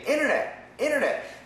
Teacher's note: the N cancels the T